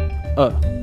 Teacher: there is also what's known as the mid central vowel called a schwa this is the sound produced when the mouth is open and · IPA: ə